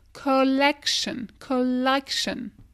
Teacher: Collection. En français, t'entends, on dit collection. C'est très fermé le O. Ici, ouvre bien la bouche.